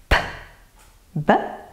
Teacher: Comme les fricatives, nous avons pour un même lieu d'articulation une sourde et une sonore produite avec les cordes vocales. P, B, je les prononce avec les deux lèvres.